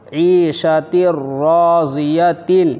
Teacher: تا را 2 زیر تیر، عیشا تیر، را الف زبر را، زاد زیر زی، راضی، یا زبر یا، راضیہ، تا 2 زیر 3، عیشۃ راضیۃ، تا کے نیچے 2 زیر ہے اور اس کے بعد را ہے، یہاں ادغام تام ہو رہا ہے، یہاں بھی غنہ نہیں ہوگا